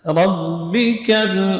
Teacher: ka huruf yang keluar di pangkal lidah itu setelahnya menempel pada langit-langit yang lunak dan yang keras bersamaan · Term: kaf